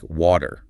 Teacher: The T softens into a D sound, and the R at the end is pronounced. Water, yeah, it all kind of flows together. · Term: standard American English